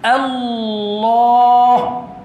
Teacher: Tuan-tuan kena sebut bila akak takbir tu Allah tu biar betul-betul bulat bunyi tahu. Bunyi biar bulat. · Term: lam taghlis